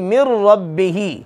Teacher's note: نون ساکن کے بعد را آ گئی، اب غنہ نہیں ہوگا، بلکہ کیا کریں گے؟ نون کی آواز کو را میں داخل کر دیں گے۔ من ربہ، من نہیں پڑھنا، من ربہ، را کے اوپر زبر آگی، را موٹی ہوگی۔